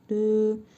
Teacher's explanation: Dəl hərfində hərfi məd var. Bir əlif miqdarı uzadırıq. Dö. Bu nun hərfidir.